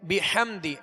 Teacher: ہا کی آواز کو حلق سے, درمیان حلق سے ادا کریں گے اور واضح کریں گے